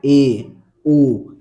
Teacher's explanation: अर्ध संवृत का मतलब है हाफ क्लोज। बोलते समय आधा मुख बंद हो।